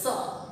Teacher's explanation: दंत्य स को बोलने में जीवा यानी जीभ हमारी दांत को छूती है।